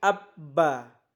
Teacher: Misalnya, dengan melafalkan abba, kita dapat mengetahui bahwa huruf ba keluar dari kedua bibir